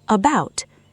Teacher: The word about. The first syllable collapses into schwa, sounding like about, not about or about.